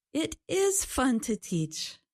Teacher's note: For example, if I ask if it's fun to teach English, she can say, It is fun to teach. You can hear that it is fun to teach sounds a little stronger than it's fun to teach. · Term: stress on small words